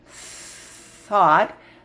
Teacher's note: That's the quiet one where your tongue is between your teeth, but it just blows air.